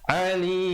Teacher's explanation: Alim, jangan baca alim, kalau a jadi hamzah, yang di sini huruf ain ya. Alim, akhirnya ditutup mulut rapat, menyempurnakan bunyi mim dengan kadar 2, 4 ataupun 6 harakat ma'aril sukun.